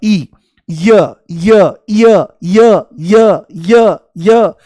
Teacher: देखो जैसे ही य बोलोगे तो इ शुरू में महसूस होगा। · जैसे ही य बोलोगे तो ई शुरू में महसूस होगा, ई, य य य य य य य, जैसे सीढ़ी अटक गई हो तो ई की ध्वनि आती है। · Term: अर्धस्वर